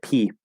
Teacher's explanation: i'm stopping the air and then pushing it out it happens very fast but there's this stopping of the air where other sounds [Music]